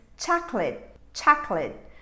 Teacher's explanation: pronunciation is chocolate chocolate i have two syllables here chuck lit this last sound that would be late is in fact a schwa sound it's reduced